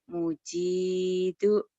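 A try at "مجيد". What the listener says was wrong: Ma. Bukan mu.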